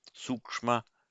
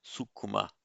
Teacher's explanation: the long uksh becomes uku, two short syllables in Pali